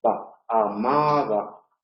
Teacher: Entonces, en palabras como amaba, si os fijáis en los imperfectos de la primera, amaba, en la M los labios se pliegan, se cierran totalmente, amaba, para que el aire pueda salir por la nariz, y sin embargo el va no se cierra totalmente